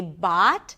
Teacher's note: Bought is a long, open ah sound, and it's actually, it could be pronounced with the ahs and father, bought, depending on the dialect, right?